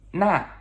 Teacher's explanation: N-A, fourth tone descending